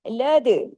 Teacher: दाल पे कलकला कीजिए जज्म के साथ आ गया